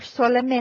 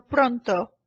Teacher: notice how the O is a little bit rounded and it's a little bit crisper it's not as drawn out as our English no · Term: long o sound